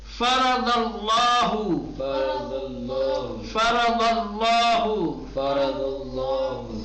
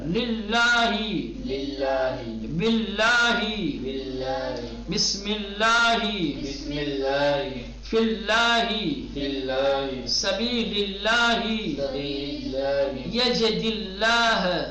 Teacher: تو جب بھی لام سے پہلے پیش یا زبر ہو تو لام کو تغلیظ کے ساتھ پرحجم اور موٹا بنا کر پڑھا جائے گا